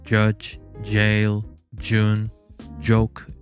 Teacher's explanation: voiced post-alveolar affricate, which can be heard in English words such as judge, jail, June, joke